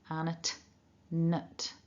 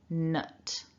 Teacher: we begin with the nasal n and then we've got an uh